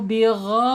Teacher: Wa mallahu bigha, awas bigha diperhalus ghain ya. Ghain ini makhrajnya ada di tenggorokan ya, tenggorokan paling atas. Bigha ditebalkan, bigha tapi jangan bigo.